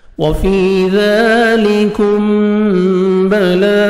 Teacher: باریک پڑھنا ہے، میم ساکن کے بعد با آ رہا ہے، میم اخفا کریں گے، نوز میں ساؤنڈ لے کے جائیں گے